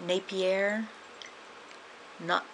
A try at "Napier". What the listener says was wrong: They wouldn't pronounce the R. So it would be like Napier.